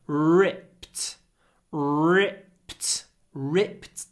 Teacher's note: try to do a long R and a very short I before the unvoiced P